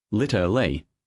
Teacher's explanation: In British English it's literally, 4 syllables. In American English, the middle sounds are reduced, literally, often even litle.